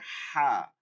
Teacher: হলকের মধ্য থেকে হালকা আওয়াজে উচ্চারণটা কি হবে হালকা চাপ দিয়া হালকা আওয়াজ করতে হবে